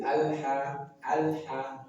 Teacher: Kemudian ha dari pangkal tenggorokan